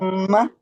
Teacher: मीम में फितरी गुन्ना मौजूद है हाँ, और यहाँ पर ये मुशद्दद भी है, यानी कि अब हम मुशद्दद।